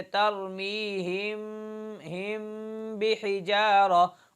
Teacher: میم کی صورت میں ہونٹوں کو بند کر کے نرمی کے ساتھ ہم غنہ ادا کریں گے · میم ساکن کے بعد اگر با آ جائے تو میم پر غنہ کرتے ہوئے ہونٹوں کی نرمی سے ادا کریں گے ۔ غنہ تو ہوگا لیکن میم کو ادا کرتے وقت ہونٹوں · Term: اخفاء شفوی